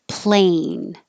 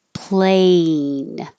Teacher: the vowel is a so you have to move your tongue from a kind of flat and your jaws kind of closed a to make your tongue go to the highest position and end with an e sound